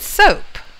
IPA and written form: soʊp (soap)